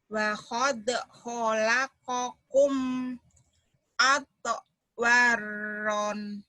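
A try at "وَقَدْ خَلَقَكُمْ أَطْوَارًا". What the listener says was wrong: Atwaran. Banyak panjang, ya. Ibu udah tahu ya. Lagi.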